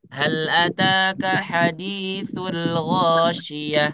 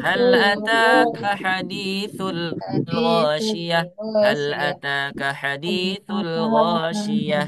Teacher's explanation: Apabila ada lam sukun lam mati lam sakinah bertemu dengan huruf gin maka lam sukunnya dibaca jelas tidak dihilangkan, tidak dilewat.